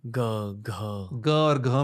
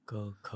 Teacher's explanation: ग और घ में आपको लगेगा कुछ हिल रहा है, ग, ग, घ, और क, ख में नहीं, क, ख, वो नाद है।